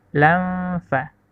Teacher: Selanjutnya kata lanfaddu, lanfa, itu hukum bacanya ikfa, karena nun sukun bertemu dengan huruf fa. Jadi cara bacanya didengungkan bunyi huruf antara nun dengan huruf fa